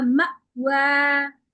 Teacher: मीम के बाद हमजा है इस पे झटका लगेगा